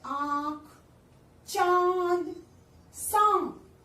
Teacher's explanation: जब किसी वर्ण का उच्चारण करते समय हवा नाक और मुंह से एक साथ निकलती है तो वह अनुनासिक होता है।